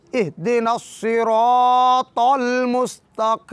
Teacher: جب ہم المستقیم کی میم کو ساکن کرتے ہیں، چونکہ یائے مدہ کے بعد میم ساکن ہو رہی ہے تو یہاں پر میم کا سکون سبب مد شمار ہوگا، تو ہم قاف زیر یا کی کو جو یائے مدہ ہے اسے 2 حرکات سے زیادہ کھینچیں گے، 3 یا 4 حرکات کے برابر